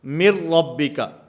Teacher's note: میم کو را کے ساتھ ملائیں گے، درمیان میں جو نون ساکن ہے یہ ختم ہو جائے گا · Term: ادغام بلا غنہ